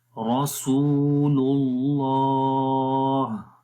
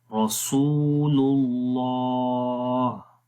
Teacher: آخر میں ہا کی آواز کو، ہا کی جو صفت ہے ہمس والی وہ آ جائے گی